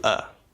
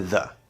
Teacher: we are reducing whatever vowel sound to this sort of neutral middle sound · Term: schwa